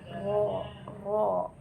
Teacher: huruf yang keluar yaitu diucapkan dengan adanya sedikit getaran di lidah nah Contohnya seperti Huruf Ro Jadi cara pengucapannya ada sedikit getaran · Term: takrir